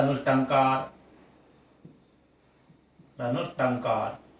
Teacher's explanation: यहां पर टा वर्ग के आने पर विसर्ग के स्थान पर मूर्धन्य सकार हो जाएगा और रूप बन जाएगा धनुष्टंकार।